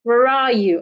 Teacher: that question starts with a wh word where where are you so because it's a wh word at the end of such question my tone should fall where are you and do not forget the linking are where